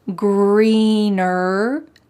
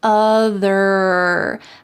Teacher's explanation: So don't forget that hard R sound in the word greener at the end, and also in the word other. Having that strong colored R sound at the end of the word is essential in American English.